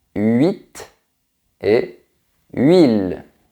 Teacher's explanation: c'est un peu comme le son U, mais qui est prononcé très vite. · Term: semi-voyelle